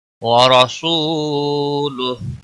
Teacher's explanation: را کو زبر کی وجہ سے موٹا پڑھیں گے. سو، واو مدہ ہے، ایک الف کے برابر کھینچ کر پڑھیں گے.